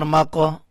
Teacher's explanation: میم قاف زبر ماقو، قاف کے اوپر کلکلہ ہے، قاف کو اٹھائیں گے